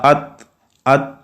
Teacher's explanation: आखिर में जब जबान को अपनी जगह से हटाना है तो थोड़ी सी आवाज जो है थ की आवाज जो है वो पैदा होगी जिसको सिफत हमस कहते हैं